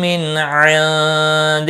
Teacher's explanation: نون کے بعد حروف حلقی کا عین ہے، اظہار حلقی ہوگا۔ نون ساکن کے بعد حروف اخفا کا دال ہے، اخفا حقیقی ہوگا۔